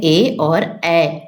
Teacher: कंठ और तालू दोनों को मिलाने पर निकलता है ए और ऐ